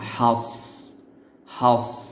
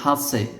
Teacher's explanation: সদটা কলকলার হরফের মধ্যে নেই। এজন্য এখানে কলকলা করা যাবে না। এখানে বলতে হবে এরকম হাস হাস।